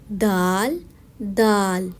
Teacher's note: دال زبان سے ادا کیا جانے والا حروف ہے. زبان کی نوک جب اوپر والے دانتوں کے کھردری حصے سے ٹکراتی ہے تو دال ادا ہوتا ہے. دال سختی سے ادا کیا جانے والا حروف ہے کیونکہ یہ کلکلائی حروف ہے.